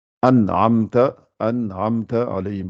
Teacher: il ne faut pas essayer de faire une liaison ou bien un runna entre le nun, sakina et le ayn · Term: izhar